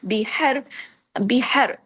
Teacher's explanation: وجہ یہ ہے کہ اس کے ساتھ واو مدہ ہے، فَأْذَنُوا بِحَرْبٍ مِّنَ اللَّهِ، اب دیکھیے بحر، حر، را کو پہلے میں اس کو آگے لے کے چلوں گی لیکن پہلے اس کو دیکھ لیں، بحر، بحر، اس میں دیکھیے ایک تو ہا کو آپ نے گلے سے پڑھنا ہے، دوسرا را کو یہاں ہیوی کرنا ہے